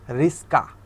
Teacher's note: দন্তস আগে চলে আসতেছে, কটা পরে চলে যাচ্ছে। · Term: ধ্বনি বিপর্যয়